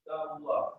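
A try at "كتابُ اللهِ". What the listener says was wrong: Ya, jangan sukun. Kalau ngobrol nggak apa-apa. Hadza kitabullah. Tapi kalau baca harus lengkap, ya. Al-Qur'anu kitabullahi.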